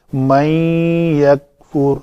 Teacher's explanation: نون ساکن کے بعد حروف یرملون میں سے یا تھا تو ہم نے اس کا ادغام کیا